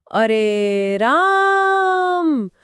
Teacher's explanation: जैसे जब आप किसी को बहुत दूर से पुकारते हैं, अरे राम, तो वो जो आ की ध्वनि खिंच रही है वो प्लुत है।